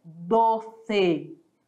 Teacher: Olha o E e olha o O, tá? Sempre ali fechadinho.